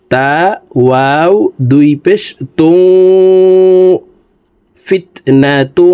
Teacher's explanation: তানউইনের পরে ইদগামে বা গুন্নার হরফ ওয়াও আছে, এই কারণে এই তানউইনওয়ালা তাটি তাসদিদওয়ালা ওয়ার সাথে গুন্নার সহিত মিলাইয়া পড়তে হবে।